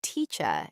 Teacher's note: British speakers often drop the letter R at the end of words. They say teacher instead of teacher.